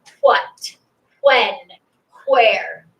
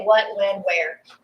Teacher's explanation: We flatten it out. We don't make the H sound anymore.